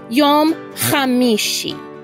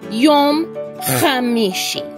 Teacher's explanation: In English, the letters CH together are pronounced ch, ch, like when we say chicken. But the Hebrew letter chet, which is the eighth letter in the alphabet, or the Hebrew alphabet, which is sometimes written CH in the English alphabet, sounds like you're clearing your throat. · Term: chet sound